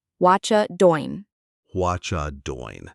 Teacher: we often drop the G at the end of doing.